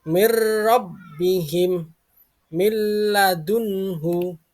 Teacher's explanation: membaca nun sukun atau tanwin dengan melebur ke huruf berikutnya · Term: Idam